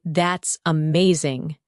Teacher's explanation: When you say, that's amazing, your tone rises with excitement.